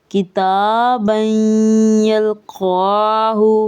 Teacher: دیکھیں تنوین کے نون کے قاعدے چونکہ بالکل ایک جیسے ہوتے ہیں تو ہم لوگ یہاں پہ بھی جو تنوین میں نون کی آواز چھپی ہوتی ہے اس کو یا کے ساتھ مدغم کر رہے ہیں